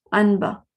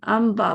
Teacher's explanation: نون کی آواز کو میم بنا دیتے ہیں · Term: اقلاب